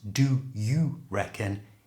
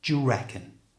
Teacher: notice here how the do and U are pronounced they come together and form a j sound so it's not do you reckon it's just J reckon try